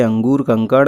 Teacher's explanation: अनुस्वार स्वर के बाद आने वाला व्यंजन है जिसकी ध्वनि नाक से निकलती है